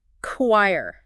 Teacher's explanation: It's from Greek originally and it kept that Greek K sound